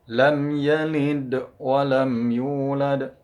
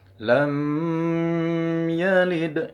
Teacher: Izhar artinya jelas, syafawi itu huruf yang keluar di antara dua bibir. Cara membacanya harus jelas, dibaca suara mimnya jelas, jangan didengungkan, jangan disamar-samarkan, tapi dibacanya jelas. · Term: izhar syafawi